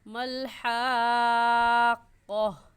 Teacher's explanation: گول تا پر جب وقف کرتے ہیں تو وہ ہا بن جاتے ہیں، اس لیے ملحاق کا کاف الف کا نہیں پڑھیں گے بلکہ قہ، ملحاقہ ایسے پڑھیں گے.